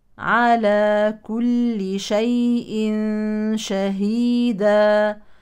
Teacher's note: التنوين يليه شين يعني اخفاء حقيقي على كل شيء شهيدا طبعا نهتم بتوضيح الهاء لانها احيانا تضيع